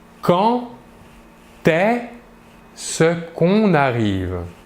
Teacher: Le D ici, pour la liaison, va se prononcer comme un T, comme si c'était un T, mais on l'écrit D.